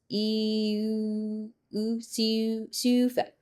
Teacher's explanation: It's almost like if you said e, but then you're making an o with your your mouth.